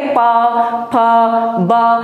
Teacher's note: अब आप देखेंगे प फ ब भ, ये क्या आपके दोनों लिप, आपके जो दोनों होंठ है वो इसमें उच्चारण स्थान में आपका साथ देते हैं, तो दोनों अब टच होंगे प फ ब, ये देखिए दोनों टच हो रहे हैं, होंठ दोनों मिल रहे हैं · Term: ओष्ठ